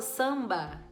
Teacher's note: Quando eu falo samba, os meus lábios só se juntam na hora do B. O sam vai aqui, ó.